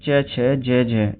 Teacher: चे, छे, जे, जे, ये दोस्तों मूर्धन्य नहीं होता, ये तालव्य होता है दोस्तों, तालव्य